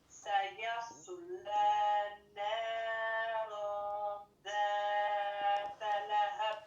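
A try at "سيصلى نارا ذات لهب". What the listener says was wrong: Ok, attention à mon irfa là. T'as dit naran Naran. On ne doit jamais entendre le an à la fin là. Le an là, il reste au niveau du nez. C'est pour ça qu'on te dit nazima.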